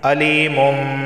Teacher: اسے علیمم پڑھیں گے، علیمم، کیونکہ یہاں پہ اقلاب ہو رہا ہے، تنوین کے بعد با آیا ہے